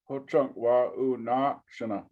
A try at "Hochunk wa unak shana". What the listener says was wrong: Yes, yeah, correct.